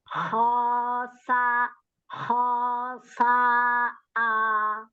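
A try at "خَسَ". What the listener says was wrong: Ya, jangan kayak huruf kayak ujung lidahnya keluar, huruf sin nggak keluar ya ujung lidah ya. Iya, sa aja gitu.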